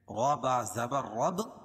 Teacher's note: با میں سختی کے ساتھ ملائیں گے کیونکہ با کے اوپر تشدید ہے